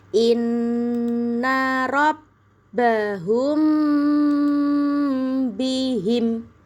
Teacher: Dibaca samar-samar di bibir dan dengung. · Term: ikhfa syafawi